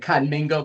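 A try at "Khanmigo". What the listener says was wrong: Conmigo, there's no N.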